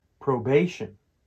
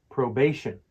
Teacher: It's pronounced probation, with the stress on the second syllable.